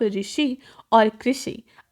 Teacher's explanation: ऋ के बाद श का उच्चारण करना है तो जीभ को पीछे ले जाना ही पड़ेगा